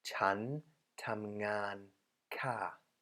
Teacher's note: female speakers use the falling tone of the polite particle ka